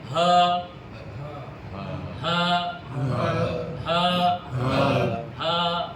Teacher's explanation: Terbuka pita suara bila kita sebut. Ada aliran angin.